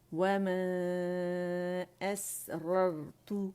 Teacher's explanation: ایک را فتحہ کے ساتھ ہے موٹی اور دوسری جو ہے وہ ہماری ساکن ہے، تو دونوں ہی موٹی ہیں. را ساکن ہے اور اس سے پہلے جو ہے وہ فتحہ ہے تو ویسے وہ موٹی ہو گئی، اور را خود اس کے اوپر فتحہ ہے جس کی وجہ سے دونوں را موٹی ہو گئیں.